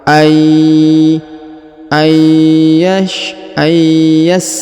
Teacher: huruf nun sukun bertemu ya bertasdid maka Nun sukunnya melebur masuk ke huruf Ya ditahan dan ditekan serta didengungkan dua harakat